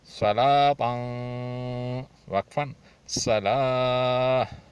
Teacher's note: تا کو ہا کر کے پڑھیں گے اور واق پر جو کھڑی زبر ہے وہ الف کے حکم میں ہے, اس کو 3 حروف کے برابر کھینچیں گے.